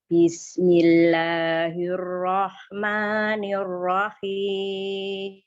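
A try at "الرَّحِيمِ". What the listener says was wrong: Nirrohim. Hi-nya bersihin lagi ya. Bismillahirrahmanirrahim. Nirrohim.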